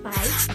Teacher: silabel kedua, yaitu pai, terdapat dua fonem vokal, yaitu a dan i, yang terletak berdampingan. Maka dari itu, dua fonem vokal ini disebut gugus fonem vokal karena terletak berdampingan di dalam satu silabel atau satu suku kata yang sama.